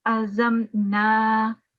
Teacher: you need to prolong for 2 seconds on these mud or on these fatha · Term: vertical fatha